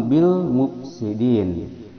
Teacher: Bil alif lam qamariyah, lamnya terbaca jelas.